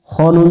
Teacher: খ অক্ষর মোটা করে পড়তে হবে, জবরে আকার পড়া যাবে না